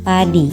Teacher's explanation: vokal I, tinggi atas depan tak bundar pada kata padi